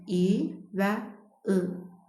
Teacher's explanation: Burada verilən saitlər də qapalı saitlərdir. Alt çənə və üst çənə bir-biri ilə bitişir.